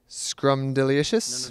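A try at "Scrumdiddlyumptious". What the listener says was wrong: No. It's Scrumdilicious. You gotta put the idly in there with the Scrumdiddlyicious.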